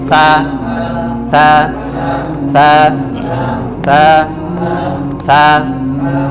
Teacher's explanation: খালি বলবেন তা, জিব্বার আগা থেকে